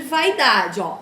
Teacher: eu começo por uma vogal e caio por uma semivogal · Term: ditongo decrescente